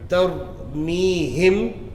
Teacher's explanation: The mim is pronounced unclearly by slightly parting the lips when pronouncing it. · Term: Ikhfa shafwi